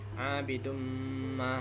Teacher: idgham bi gunna, dibaca dengan dengung